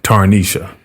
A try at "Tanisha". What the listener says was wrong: It's Tanisha. The R is silent and it's there to trip people up.